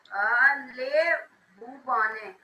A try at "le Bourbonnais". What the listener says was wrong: And it's not lay beta. What is it? It is le. This word, we don't pronounce it as lay. We pronounce it as le. Le Bourbonnais.